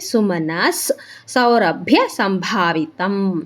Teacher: ಮುಂದೆ ಸೌ ಇರೋದ್ರಿಂದ ವಿಸರ್ಗದ ಮುಂದೆ ಅರ್ಧ ಸ ಆಗುತ್ತೆ ನಮಗೆ ವಿಸರ್ಗ, ಅದಕ್ಕೆ ಸುಮನಸ್ ಸೌರಭ್ಯ ಸಂಭಾವಿತಂ.